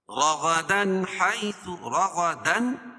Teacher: رغدن یہاں بھی اظہار حلقی، کیونکہ تنوین کے بعد حروف حلقی کے 6 حرفوں میں سے ہا ہے۔